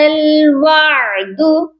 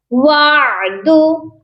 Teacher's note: عین کا جو مخرج ہے درمیان والے حلق سے ادا کیا جاتا ہے. وعد، اگر آپ کو اس کی ادائیگی میں تھوڑی سی مشکل ہو تو آپ اپنے گلے پر تھوڑا سا دباؤ ڈالیں، تھوڑا سا ہاتھ سے ہیلپ لیں اور اپنے گلے کو تھوڑا پش کر کے اس کی ادائیگی کو کیا کریں.